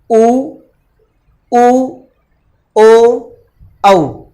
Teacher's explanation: बोलते समय हमारे होठ जो हैं उनको गोलाकार रूप दिया जाता है। जब तक हम होठों को गोल आकार में नहीं, इस तरह से अगर आप इनको गोल आकार में नहीं करते हैं होठों को, तो आप उनका उच्चारण नहीं कर सकते। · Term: वृत्ताकार